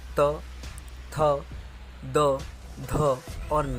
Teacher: फिर त वर्ग के अंतर्गत त, थ, द, ध और न आते हैं। इसका उच्चारण स्थान होता है दंत, मतलब जीभ दांतों को टकराती है